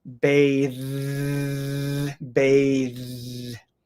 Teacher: bathe has um th but it has a voiced th